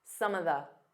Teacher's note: Instead of saying of, you can just do an unstressed some of the. So it sounds like one word.